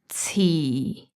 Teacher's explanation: 遲 is the lowest tone, fourth tone, flat, low.